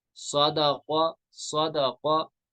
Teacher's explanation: सौद पुर पढ़ा जाएगा, हुरूफ मुस्तालिया है, कौफ भी पुर पढ़ा जाएगा, ये भी हुरूफ मुस्तालिया है।